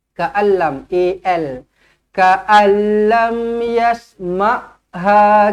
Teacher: nun kosong bertemu dengan lam, terus masukkan, tak payah dengung, idgham bila gunnah.